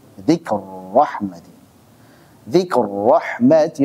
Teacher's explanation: Idgham. Ra ketemu ra. Dzikru rahmati. Dzikr rahmati. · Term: idgham kabir